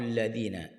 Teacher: huruf dhal, hujung lidah di hujung gigi atas keluar sedikit